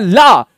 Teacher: बोलते समय जीव के पार्श्व भाग से हवा निकल जाए, ला, जीव पटकती है, जीव एकदम से पटकी, और ला हवा निकल गई पार्श्व, इसलिए पार्श्विक।